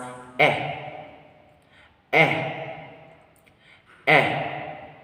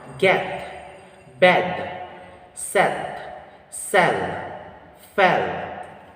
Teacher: The muscular tension of this vowel sound is lax. The tongue height is mid. The tongue advancement of this vowel sound is front. The lip shape is unrounded. Example for this vowel sound are get, bed, set, sell, fell.